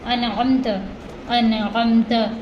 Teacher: عین حلق کے درمیانی حصے سے ادا ہوگا